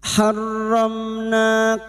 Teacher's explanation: bertemunya mim sukun dengan huruf ijaiah selain mim dan ba namanya bacaan izhar syafawi mim sukun dibaca jelas tanpa mendengung